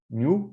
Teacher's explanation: palatal n followed by u